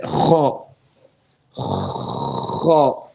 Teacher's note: There's no stoppage of breath, doesn't stop. The sound doesn't stop. Okay? So both of these two sifa are not found in the letter Kha.